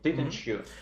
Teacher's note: combined together is gonna sound like this affricate sound this ch